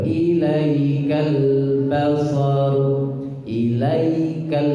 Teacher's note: lamnya ditasydid, tidak boleh disukun, tidak boleh mantul